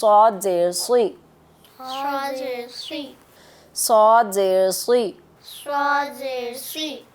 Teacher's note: صاد زیر، منہ بھر کے پڑھیں گے، اس کو بھاری آواز ہے یہ